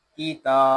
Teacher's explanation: حمزہ، واو پیش او، تا زیر تی، اوتی، یا زبر یا، اوتیا، کاف زیر کی، تا کھڑا زبر تا، کی تا، یہاں تا کو ہم 1 الف تک کھینچ کر پڑھیں گے کیونکہ تا کے اوپر کھڑا زبر ہے، اور کھڑی حرکات کو ہم 1 الف تک کھینچ کر پڑھیں گے۔